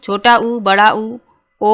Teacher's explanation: तो सबसे पहले जानेंगे कि वृत्ताकार स्वर कहते किन्हें हैं। तो जिन स्वरों का उच्चारण करते समय ओंठ गोल हो जाते हैं उन्हें वृत्ताकार स्वर कहते हैं।